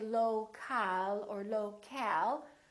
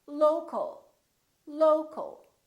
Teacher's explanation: we reduce the second syllable and it becomes the uh local local so you see ol